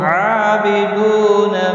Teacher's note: عین کے اوپر کھڑی زبر ہے، 1 الف کے برابر کھینچ کر پڑھیں گے